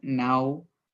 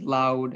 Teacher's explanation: It's the short A mixed with the short U sound. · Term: ow sound